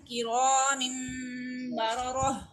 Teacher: را کو ہم ون فنگر اسٹریچ کر رہے ہیں، موٹا پڑھ رہے ہیں